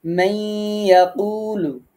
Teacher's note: নুন সাকিনে পরে ইয়া আছে, ঈদগাম মাআল গুন্না